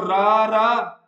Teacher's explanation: ਜੀਭ ਚ ਕਾਂਬਾ ਪੈਦਾ ਹੋਊਗਾ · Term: ਕੰਮਵਾ ਵੈਂਜਨ